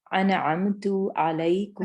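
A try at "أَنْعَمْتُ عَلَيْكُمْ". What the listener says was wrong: اچھا ادھر آپ تھوڑا سا الف کو لائٹ کیجئے، ہیوی ہو گیا تھوڑا سا یہاں پر.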